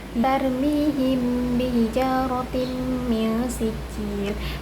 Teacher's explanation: Cara membacanya dengan menyamarkan bunyi mim atau didengungkan. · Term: ikfaf syafawi, ikhfa syafawi